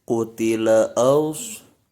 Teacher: alif disambung dengan sod sukun, bukan as tapi aus, seolah-olah membaca aus.